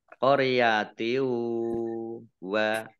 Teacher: kasroh tanwin bertemu dengan huruf wawu, bacaan idgham bi gunnah. Idgham masuk, bi dengan gunnah mendengung.